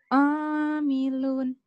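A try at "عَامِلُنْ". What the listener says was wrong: Masih ketahan ya. Amilun. Amilun. Gak usah ditahan. Amilun. Dilepas ya. Jangan ditahan.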